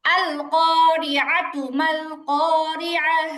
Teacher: আইনে টান হবে না।